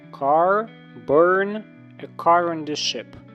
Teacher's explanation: В американській р вимовляється завжди.